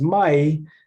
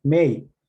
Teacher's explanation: sometimes vowel raising will happen so it's written as my sometimes it comes out as me